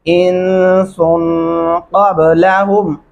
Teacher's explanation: क़ब यहाँ पे कलकला होगा